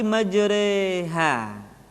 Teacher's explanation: Jadi huruf ro yang berharakat fathah dibaca miring ke kasrah · Dibaca imalah, dimiringkan. Jadi huruf ra yang berharokat fathah dibaca miring ke kasrah, sehingga bunyinya bukan majraha tetapi majreha.